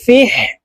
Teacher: হা হরফ হালকের মধ্যখান থেকে উচ্চারণ করতে হবে কারণ হার মাখরাজ হালকের মধ্যখান থেকে হবে ফা হা জের ফিহ